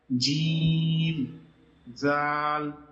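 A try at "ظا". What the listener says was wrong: এটা জাল না এটা জা জা এটা জ না এটা জা জাল জা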